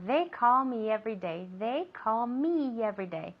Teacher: so me every day becomes just one word